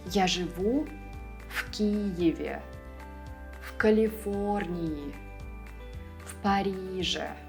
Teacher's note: Always pronounce them as one word. And if a word after the preposition starts with a voiceless consonant, V will turn into F